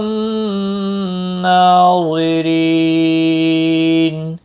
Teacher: اللہ ضا حروف مستعلیہ میں سے ہے، پر پڑھا جائے گا۔ را زیر کی وجہ سے باریک ہوگا۔ ری یا مدہ بھی ہے، ایک الف کے برابر کھینچ کر پڑھیں گے، اور وقف کی صورت میں نون ساکن پڑھا جائے گا، وقف بالاسکان ہوگا۔